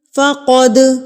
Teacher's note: یتبدل الکفر بالایمان فقد، قوف پھر سے آ گیا یہاں پر تو قوف کو ہم پر کر کے پڑھیں گے، منہ کو آپ تھوڑا سا گول کریں گے تو قوف کی ادائیگی جو ہے وہ ہیوی ہوگی، موٹا ادا ہوگا